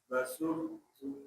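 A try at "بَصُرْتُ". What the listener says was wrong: Shadnya lebih tebal. Basurtu. Memang dia mirip ke sin ya. Satu satu makhraj dari huruf sin. Ya, sama-sama satu makhraj. Basurtu. Tapi ingat jangan untuk latihan mungkin ya bolehlah ke sin. Tapi terus nanti ditebalkan ya.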